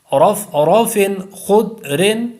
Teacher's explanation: ضاد پر کلکلا نہیں کرنا کیونکہ یہ حروف کلکلا میں سے نہیں ہے اس لیے یہاں پر کلکلا نہیں کرنا.